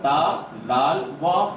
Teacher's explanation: زبان کی نوک کہاں لگ رہی ہے, اوپر دانتوں کی جڑ میں لگ رہی ہے